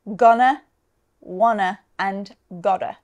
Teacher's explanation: the stress is always on the first syllable